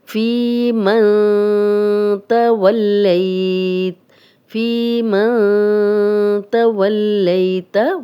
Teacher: नून साकिन है, आगे ता आ गया, ये हरूफ़े हल्की में से नहीं है, उन 6 हरूफ में से ता नहीं है, तो यहाँ हम गुन्ना करेंगे। फ़ी मन तवल्लैत, फ़ी मन तवल्लैत, वल, यहाँ भी लाम पे शद है तो 2 बार पढ़ा जाएगा।